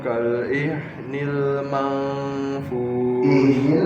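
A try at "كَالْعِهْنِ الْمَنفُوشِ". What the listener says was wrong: pakai ain kan bukan hamzah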